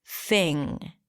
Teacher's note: notice how I said thing without popping my g sound at the end, because it ends with an ng, so you don't really release the g here.